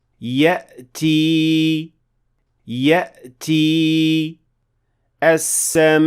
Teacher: hamza should be a pure closure of vocal cords, stopping air momentarily without exaggeration or inattention.